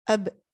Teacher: for letter ba, you just have to be closing your two lips together. Ab. Okay, but the ba is a bit stronger.